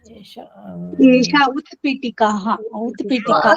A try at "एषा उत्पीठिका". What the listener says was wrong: Pitika. There is no visarga.